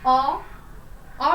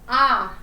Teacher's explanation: अ में हमें कम समय लगता है। फिर आ में थोड़ा सा ज्यादा समय लगा, यानी कि अ हमारा ह्रस्व स्वर है और आ ह्रस्व स्वर नहीं है।